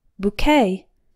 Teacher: boo rhymes with two and q ue t sounds like the k in okay the stress is on the second syllable